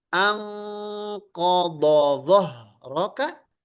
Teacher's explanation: Al-bayanu lazimu, maka jelas, dibaca jelas, lazimu adalah hal yang wajib. Jadi jika ada huruf dhad dan huruf dha bersandingan, maka keduanya dibaca dengan izhar